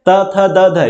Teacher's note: त, थ, द, ध। ये आपका निकलता है दंत से